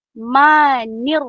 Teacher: Him huruf ha itu daripada tengah halqum.